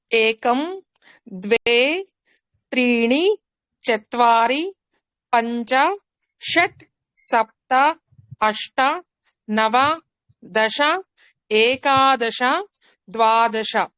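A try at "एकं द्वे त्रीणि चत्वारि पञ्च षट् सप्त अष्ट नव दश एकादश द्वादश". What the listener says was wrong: సమీచీనం.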